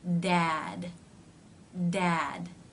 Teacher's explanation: see there the teeth are not closing all the way but you're getting a d Sound by the Tongue coming up into position and pulling away